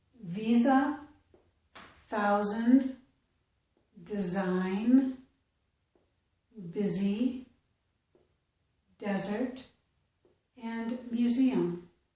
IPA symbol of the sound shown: z